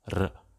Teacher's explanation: In the rhotic north, the consonant R is typically pronounced as an alveolar tap or flap